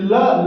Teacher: का उच्चारण स्थान दंत या इसे पार्श्व व्यंजन भी कहते है ल को दंत या पार्श्व व्यंजन कहते हैं